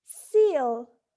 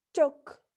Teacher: So, in the first word, seal, the vowel sound E is pronounced with unrounded lips, seal, while in the second word, the vowel sound U is pronounced with rounded lips, took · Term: roundness